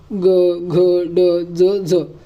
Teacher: ज्या वर्णाचा उच्चार करताना आवाज घुमतो त्यास काय म्हणायचं? घोष असे म्हणायचं.